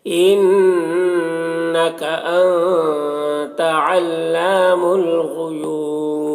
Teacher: ان کا نون مشدد غنہ کے ساتھ پڑھیں گے، ان تک نون میں اخفا ہو رہا ہے · اللہ میں الف مدہ ہے، 1 الف کے برابر کھینچیں گے۔ غیوب، غین کو پر پڑھیں گے، یو میں واو مدہ ہے، اور یہاں پر وقف کریں گے تو مد عارض وقفی ہوگا، اور با میں قلقلہ ہوگا